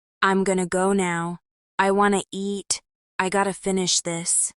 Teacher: Going to becomes gonna, want to becomes wanna, and got to becomes gotta. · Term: elision